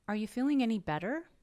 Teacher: Yes and no questions, a question with yes or no answer. We will raise our pitch at the end of the question.